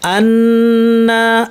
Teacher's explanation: তাহলে আওয়াজটা কখন হয় নুন আর মিমের ক্ষেত্রে, যেমন আন্না, নুন যেখানে আছে সেখানে এই নাকি আওয়াজটা গুন্নাটা আছে, আন্না। মিমেও তাই, আম্মান আন্না।